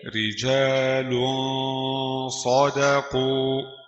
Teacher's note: لام تنوين بالضم مخفى عند الصاد المفتوحة بغن حركتين.